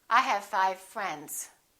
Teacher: The only difference between the V and the F is that V is voiced and F is voiceless. Otherwise, the lips are doing exactly the same thing.